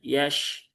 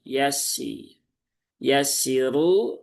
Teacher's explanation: yang sinnya ada tasdidnya dan jangan sampai tertukar menjadi shin ya, menjadi yash ya, yash.